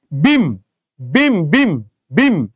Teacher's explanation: শেষে মুখ আটকে যাচ্ছে, যেহেতু আটকে যাচ্ছে সুতরাং এটা হচ্ছে বদ্ধাক্ষর